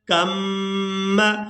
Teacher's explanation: کاف کو میم مشدد کے ساتھ ملائیں گے تو غنہ کے ساتھ ادا کریں گے